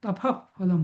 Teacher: आता मी उपपद्मानीय म्हणजे काय सांगतो. तर जेव्हा विसर्ग आणि त्याच्यापुढे प आणि फ येतो, तेव्हा त्या विसर्गाचा उच्चार अर्धविसर्ग आणि थोडा कठोर होतो